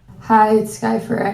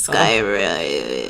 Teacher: You pronounce her name with a really deep vocal fry essentially.